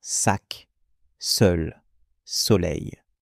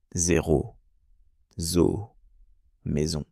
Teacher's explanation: Le S est généralement un son sourd comme dans sac, sol, soleil. Le z lui vibre un peu plus comme dans zéro zo eau maison.